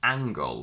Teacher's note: we say angle with a g after the ng sound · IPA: /ŋg/